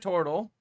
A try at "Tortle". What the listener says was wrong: You keep saying it wrong. Tortle. You keep like mixing the letters around.